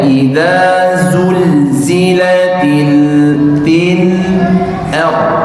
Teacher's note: masuk kepada huruf ra untuk menebalkan dari yang tipis masuk ke tebal. Ya, idza zulzilatil ard, bukan ar tapi r.